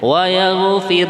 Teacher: roknya dibaca tipis ya, atau dalam bahasa Arabnya itu tarkik ya. Nah, karena rok mati atau rok sukun sebelumnya harokat kasroh.